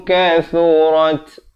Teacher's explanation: Syai'au walau kathurat thu di hujung lidah. Keluar di antara 2 gigi kita. Kathurat ada bunyi angin hamas di situ.